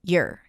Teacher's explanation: your is reduced to /jər/